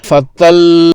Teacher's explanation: اگر نبر نہ کیا جائے تو سننے والے کو معلوم پڑے گا کہ ایک ہی لام ساکن ادا ہوا ہے، اس لیے اس جگہ پر وقف کرنے کے لیے نبر لازم ٹھہرے گا، اور لام مشدد کو زور دے کر واضح کر کے ذرا بلند آواز سے پڑھیں گے